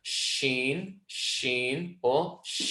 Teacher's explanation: Sheen is when the middle of the tongue comes towards the roof of the mouth but you don't have complete connection there